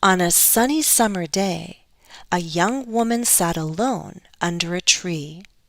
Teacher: It's falling intonation because it's the end of a sentence.